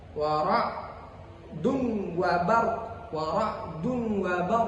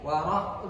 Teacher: membacanya dengan idgham bighhairi gunah atau biasa disebut idgham bila gunah tanpa dengun